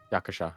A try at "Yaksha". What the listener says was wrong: Yaksha. Yakuza, but without the U. Just Yaksha.